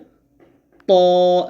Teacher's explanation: জিহ্বার আগা, সামনের, উপরে 2টা দাঁত, বড় দাঁত, ওই 2 বড় দাঁতের গোড়ার সঙ্গে লাগবে এবং কি হবে মোটা হবে।